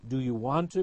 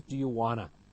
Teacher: we have reductions, such as the unreduced do you want to becomes do you wanna